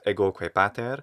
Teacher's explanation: i hear a long o or certainly a stressed o in ego